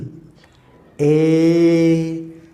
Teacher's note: There is no friction. There is no stoppage or blockade of air flowing out from my lungs.